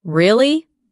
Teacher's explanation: when you ask a question like, Really? your voice goes up slightly at the end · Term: rising tone